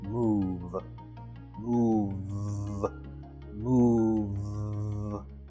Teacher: My notes indicate that the final V sound is voiced.